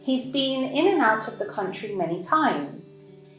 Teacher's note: The words been, country, and times are stressed.